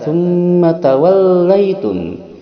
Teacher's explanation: Tsumma mim bertasydid, ini ada dengungan 2 harakat dinamakan gunnah, yang mana huruf gunnah ada 2, yaitu mim dan nun bertasydid.